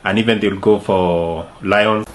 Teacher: he says something like lions, adding a soft y in the middle. It stretches the word slightly and gives it a more flowing sound.